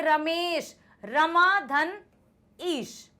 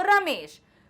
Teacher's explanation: तो आप देखो, ये आ है, ये भी स्वर है, ई है, ये भी स्वर है, आ ई ये स्वर होते हैं ना। तो ये आ और ई मिलकर बन जाता है ए